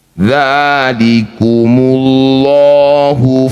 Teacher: lafaz Allah didahului dhammah sebelumnya, maka lamnya baca dengan tafkhim atau tebal.